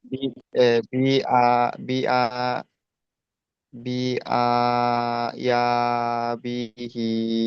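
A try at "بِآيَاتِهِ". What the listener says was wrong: বিহি নয়, বিহি নয়, উপরে দুই নোক্তা কি হয়?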